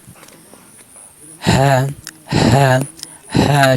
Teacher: হা হরফ হলো হলকের শুরু হইতে উচ্চারণ হবে। হ্যাঁ হ্যাঁ হ্যাঁ স্বাভাবিক উচ্চারণ হবে, কোনো চাপ না।